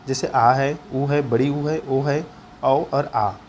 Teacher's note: जिन स्वरों के उच्चारण में जिह्वा का पीछे का भाग सक्रिय होता है उसे पश्च स्वर या पीछे का स्वर कहा जाता है। पीछे वाला शब्द जैसे आ है, ऊ है, बड़ी ऊ है, ओ है, औ और आ।